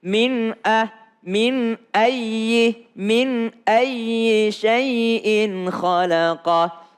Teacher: Min, nun ketemu dengan hamzah, tidak boleh ditahan lama